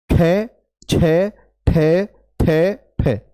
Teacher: अब इन सभी को बोलकर देखो आप तो आप पाएंगे कि इनके बोलने में हाथ पर हथेली पर अधिक वायु का प्रभाव आ रहा है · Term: महाप्राण